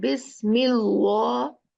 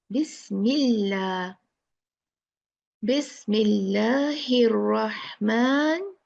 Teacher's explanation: So this haraka of kasra, remember, make the lam lafzul jalala light, not heavy.